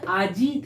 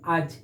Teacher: শেষের হস্যইটা লোপ পেয়েছে